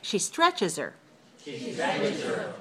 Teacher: pronouns are usually very weak, and we can weaken the H in it.